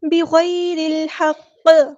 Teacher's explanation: وقف کرتے ہوئے قاف کو ساکن کر دیں گے تو قلقلہ ہوگا · را یہاں پہ ہم نے باریک پڑھنی ہے کیونکہ زیر آ گئی ہے